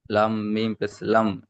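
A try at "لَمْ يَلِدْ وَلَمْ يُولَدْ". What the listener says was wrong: লাম মিম জাবার পেশ না, লাম মিম জাবার লাম।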